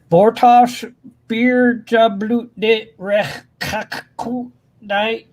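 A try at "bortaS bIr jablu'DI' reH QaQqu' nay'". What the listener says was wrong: The only thing I would say is that your R is very English and not very Klingon, but that's pretty common actually.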